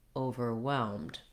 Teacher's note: we do have some stress on the O syllable and a clear vowel. So you want to use your clear diphthong O here.